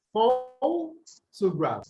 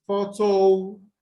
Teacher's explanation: in photographer, the stress is no longer on the first syllable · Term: stress shift